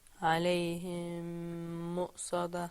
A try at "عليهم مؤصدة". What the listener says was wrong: No. This time you're going to put your lips together right away. There's no ikhfa here.